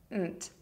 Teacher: Add the short E vowel, then finish with the NT combination. Do this by putting your tongue behind your top teeth, direct the air through your nose for the N, then quickly explode the air through your mouth for the T sound